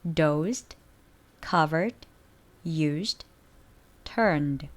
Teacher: voiced ending일 경우 마찬가지로 유성음 뒤에는 유성음 드 발음이 따라옵니다.